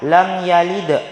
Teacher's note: cara membacanya lam yalid, dibaca pantul dengan ringan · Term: qalqalah